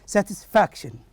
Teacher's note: the word that is satisfaction, the stress goes to the syllable that is the next to the last one, which is F-A-C, fac.